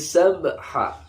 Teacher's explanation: qalqalah yang dalam keadaan sukun asli ini pantulannya kecil. yang dikenal dengan qalqalah sughra, pantulannya kecil.